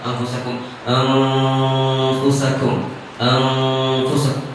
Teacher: Pada saat ketemu huruf yang tebal kita seolah tipis. Misalkan biasanya huruf fa itu kan tipis, tapi dia ikhfa, mestinya bunyi gunnah di situ pun juga tipis.